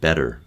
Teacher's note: in North American English, a lot of people use tapped R in place of T, right? That voiced T.